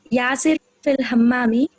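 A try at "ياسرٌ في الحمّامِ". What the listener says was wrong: Yasirun fil You said Yasir means you have to you stopped at Yasir. As a beginner, we have to pronounce each and every sign.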